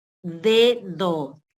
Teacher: se produce un contacto de la punta de la lengua con los dientes incisivos superiores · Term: dentales